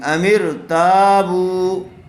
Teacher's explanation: را ساکن سے پہلے والے حرف کے نیچے زیر آئی ہوئی ہے، اس لیے را باریک ہوگی